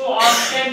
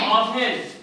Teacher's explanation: Word में लेटर है टी, लेकिन उच्चारण करते समय टी नहीं आ रहा है। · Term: साइलेंट लेटर